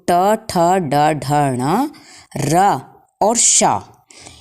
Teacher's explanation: तीसरे नंबर पर मूर्धा है तो हम री वर्ण को, और तीसरे नंबर का वर्ग हमारा ट वर्ग है तो ट ठ ड ढ ण र और श, इनका उच्चारण स्थान मूर्धा होती है।